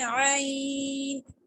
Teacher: وقفن کی صورت میں یا لین ہے تو اس کو ہم اسٹریچ کریں گے